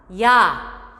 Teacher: 이 모음에서 아 모음으로 흘러가며 발음합니다. 그래서 아래턱을 당겨놓은 상태의 입 모양에서 발음하지 않습니다. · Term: 이중모음